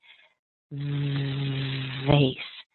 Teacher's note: if you can say face and you add a little voice and vibration to that first sound you'll end up saying v v